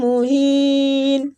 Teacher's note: عذاب مہین میم مشدد ہے تو اس پہ غنہ کرنا، آگے مد عارض ہو رہی ہے۔